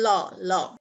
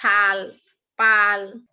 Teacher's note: এ জাতীয় ধ্বনি উচ্চারণের সময় বাতাস জিভের পেছনের এক পাশ বা দুপাশ দিয়ে বেরিয়ে যায় এবং জিভ দাঁত অথবা দন্তমূলে অবস্থান করে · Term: পার্শ্বিক ধ্বনি